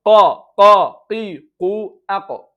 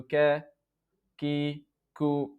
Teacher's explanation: Qaf is heavy letter, so the sound would be up, قي قو أق. Kaf is not a heavy letter, so ka, ki, ku, it is not istila, just lowering